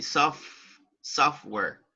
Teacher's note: And right here, the letter T is not pronounced.